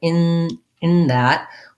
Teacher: when i have an n to th combo i'm going to be doing these two sounds very closely together and i'm not going to do in that with my tongue